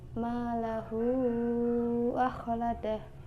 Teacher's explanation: Yang ke-12 adalah mad silah tawilah, yaitu apabila mad silah qasirah bertemu dengan huruf hamzah, dibaca dengan panjang 2,5 alif atau 5 harokat.